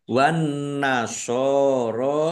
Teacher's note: Wan nasoro alif lam samsiah karena tidak dibaca langsung masuk ke huruf berikutnya yaitu nun ditandai nunnya ada tasdidnya. Nun tasdid dibaca gunah atau mendengung ditahan 2 kira-kira 2 harokat biar tampak mendengungnya